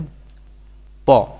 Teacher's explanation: অঘোষ অল্পপ্রাণ ধ্বনি হচ্ছে প